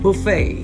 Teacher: would be pronounced buffet buffet with stress on the first syllable in american english the word would be stressed on the second syllable two american pronunciations the first is buffet the second is buffet